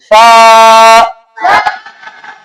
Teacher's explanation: तो सा में सीटी की आवाज नहीं आनी चाहिए